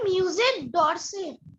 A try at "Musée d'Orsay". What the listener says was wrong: D'Orsay. Yes.